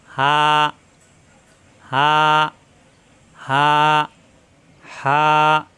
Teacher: হা মুখ খোলা থাকবে হা কণ্ঠনালীর শুরু থেকে